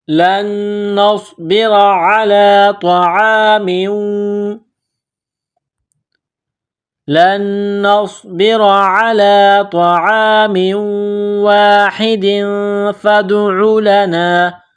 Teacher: تنوین کے بعد فا ہے، حروف اخفا ہے تو یہاں آواز ناک میں چھپائیں گے ، اس ناک میں آواز چھپانے کو اخفا کہتے ہیں لن